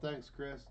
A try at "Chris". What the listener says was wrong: Did you just add a T? I was going to say, did you just add a T to the end of his name? You said, thanks, Christ.